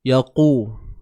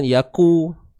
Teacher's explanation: Kita akan munculkan bibir kita. Dan dalam masa yang sama qaf ini bersifat tebal selamanya. Yaqu. Hati-hati jangan tertukar dengan huruf kaf kan, yaku, ataupun memang nak sebut qaf, cuma bunyinya lemah aja.